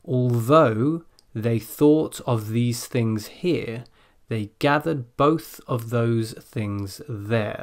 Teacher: It's quite a lot of voiced TH in that tongue twister, but also a couple of unvoiced THs.